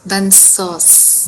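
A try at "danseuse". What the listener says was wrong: Da नहीं ना ये an है ना da नहीं है ना an is on. Danseurs, because this s is between two vowels.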